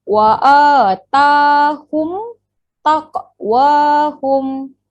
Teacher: Rapatkan bibir, terus jelas. Tak payah dengung. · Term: izhar syafawi